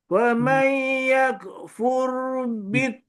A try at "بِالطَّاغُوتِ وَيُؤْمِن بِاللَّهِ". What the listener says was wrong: To tu panjang sangat tu. To tadi panjang sangat. Pastikan dua harakat.